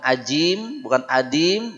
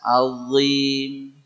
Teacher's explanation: ujung lidahnya pastikan nempel di ujung gigi seri atas